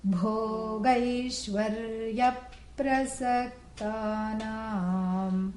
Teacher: You have to breathe on the B. Aspirate, okay?